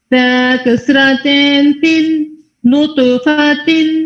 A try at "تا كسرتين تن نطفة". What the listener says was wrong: Again the tone. Ta kasratin tin. the tone and the kasra, ra heavy. Ra heavy in kasra.